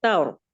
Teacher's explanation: لیکن آگے دیکھیے یوم الطور، یہاں پہ جو را ساکن ہے، را ساکن سے پہلے جب فتحہ آ جاتی ہے، زبر آ جاتی ہے، تو اس را کو ہم پر پڑھتے ہیں